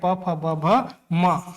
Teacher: जब तक आपका दोनों होठ आपस में स्पर्श नहीं होगा तब तक ओष्ठय वर्ण का उच्चारण संभव नहीं है